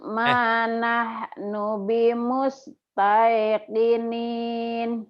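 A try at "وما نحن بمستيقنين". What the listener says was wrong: Iya, jangan Tai Bu ya. Thailand, Taiwan, Taipei, apa lagi ya? Jangan bahasa Sunda ya. Bimus Taikinin, Thailand, Tai. Manahnu bimustaiqinin.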